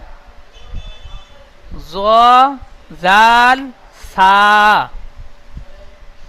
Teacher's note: জীবের আগায় এবং সামনের উপরে দুই দাঁতের আগার সাথে লাগিয়ে উচ্চারিত হয় জ জাল ছা তাহলে এই জীভের আগা এই আগাটি সামনে উপরে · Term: 12 নম্বর মাখরাজ